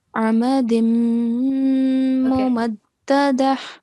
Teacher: So we will only take one stroke of the tanween. Okay, and we have to make a 2-second nasal sound on the mim mushaddad · Okay, just remember to prolong this part for 2 seconds because of yamadda. And the tanween, we have to join it into the mim mushaddad. Okay, we are applying the rule of partial assimilation here.